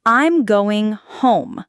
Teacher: In American English, statements usually have a falling intonation at the end signaling completion